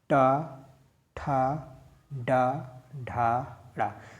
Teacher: और जब छत का अगला भाग यूज हो तो हम किस पे आ जाएंगे, टा वर्ग में आ जाएंगे। ठीक है, अब अगला भाग बोल के देखिए आप, टा, ठा, डा, ढा, ड़ा, अगला भाग यूज हो रहा है या नहीं यूज हो रहा है, अब बोल के देखिए।